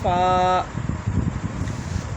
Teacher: اگلے دونوں دانتوں کی نوک جب نیچے کے ہونٹ کے اندر والے حصے سے لگے، وہاں سے ادا ہوتا ہے فا۔